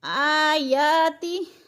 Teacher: आयाति, आ और जा खड़ी ज़बर है, खड़ी ज़बर भी अलिफ मद्दा का कायम मकाम है, यानी एक अलिफ के बराबर खींच कर पढ़ना है